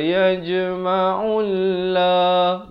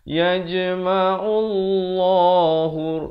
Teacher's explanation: Di sini lafaz jalalah baca tebal.